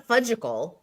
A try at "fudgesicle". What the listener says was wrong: You did that one American thing. Americans always say fudgicle. They don't say fudgesicle. They say fudgicle. Fudgesicle.